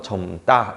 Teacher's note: 리을 미음에서 리을이 날아가고 미음만 남아서 젊다 이렇게 발음됐죠